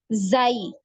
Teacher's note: kalau untuk huruf zai ini dia tidak ada aliran nafasnya. Jadi tidak ada aliran nafas yang mengalir dari dalam mulut keluar ini ketika kita mengucapkan huruf zai.